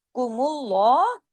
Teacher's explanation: قوم اللہ قومل، دیکھیں یہاں پہ میم پہ جو پیش ہے نا اللہ کے نام سے پہلے، تو اس میں لام جلالہ بھی ہوگا، رب قوم اللہ، میم کے پیش کی وجہ سے اللہ کے نام میں لام بھی ہیوی ہوگا